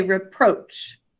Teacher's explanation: We say reproach and kind of emphasize the second syllable.